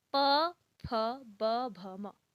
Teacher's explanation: पवर्ग का उच्चारण स्थान होंठ या ओष्ठ होता है